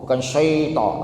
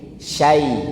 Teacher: Jadi ya-nya itu Bapak Ibu dipanjangin.